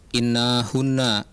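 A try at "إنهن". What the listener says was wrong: innahunna. Nunnya pendek. Innahunna.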